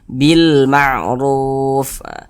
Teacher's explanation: huruf mim sedangkan huruf mim adalah adalah huruf qamariah e sehingga huruf lamnya dibaca izhar terbaca dia dengan jelas huruf lamnya